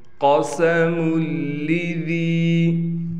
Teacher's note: قاف کو یہاں موٹا کریں گے، سین کو صاف طور پر نکالیں گے